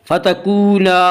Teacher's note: هذه الشجرة فتکونا، فتکونا واو مدہ، واو مدہ وہ واو جو ساکن ہو اور اس سے پہلے پیش ہو، واو مدہ کو ایک الف کے برابر کھینچ کر پڑھیں گے